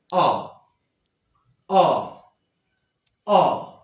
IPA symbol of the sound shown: ɒ